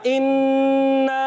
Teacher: दोनों हमज़ाओं को तहकीक से खूब वाज़े करके अदा करेंगे